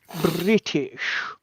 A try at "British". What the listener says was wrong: There is a T in that sentence, sir.